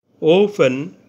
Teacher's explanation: দুটি vowel sound একত্রে উচ্চারিত হয়। প্রথম স্বরধ্বনিটি একটু জোরে এবং দ্বিতীয় স্বরধ্বনিটি একটু নিম্নস্বরে উচ্চারিত হয়। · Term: ডিপথং